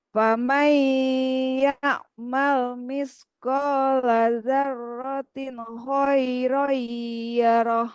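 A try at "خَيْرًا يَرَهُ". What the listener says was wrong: Nah, roinya kurang tahan Bu, kurang.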